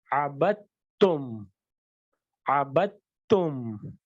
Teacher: اس دال کو ہم اومٹ کر دیں گے، یعنی اس دال کو نہیں پڑھا جائے گا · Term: ادغام متقاربین